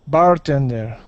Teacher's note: our accent's going to go at the very beginning of the word